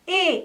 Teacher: E is sound that falls between the E from bet and the A from bay